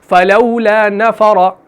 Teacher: اب دیکھیے را کے اوپر زبر آ گئی، اس کو موٹا پڑھنا ہے